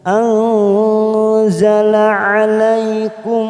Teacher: nun sukun bertemu zain, ikhfa namanya ikhfa ausat, kita samarkan bunyi nun sukun 3 ketuk